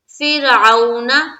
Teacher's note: فر میں را کو باریک رکھنی ہے کیونکہ را سے پہلے زیر ہے